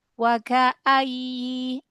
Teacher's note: ya tasdid memang dinaber, tetapi kasih rokhwah. Jadi jangan syiddah. Wa ka'ayyi, alirkan ya.